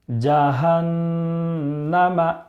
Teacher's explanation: نون کے اوپر تشدید ہونے کی وجہ سے ایک الف کے برابر غنہ کریں گے